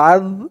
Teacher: জাল জের জি আজ আর জালের উচ্চারণটা এখানে একদম নরম হবে জিহ্বার মাথা উপরের দাঁতের মাথার সাথে লাগবে জালের উচ্চারণটা করার সময়